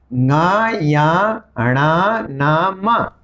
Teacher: ये यद्यपि अपने अपने वर्ग में उच्चारित हो रहे हैं, लेकिन ये पंचम वर्ण है। पंचम वर्ण को हमें नासिका के सहारे बोलना पड़ता है। इनका उच्चारण करते समय हमें नासिका यानी नाक की मदद लेनी पड़ती है।